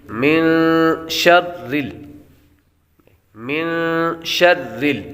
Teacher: من شر من شر من پر غنہ ہوگا، نون ساکن کے بعد شین حروف اخفاء میں سے آ رہا ہے تو غنہ کر کے پڑھیں گے۔ شرل، را یہاں پر باریک پڑھیں گے، را کے نیچے زیر ہو تو را کو باریک پڑھتے ہیں۔